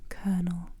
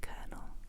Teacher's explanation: On remplace le L, le premier L, avec un R quand on le prononce. Colonel. Comme K-I-R-N-E-L.